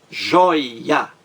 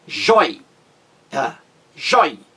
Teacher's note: A mais forte aí é a penúltima sílaba.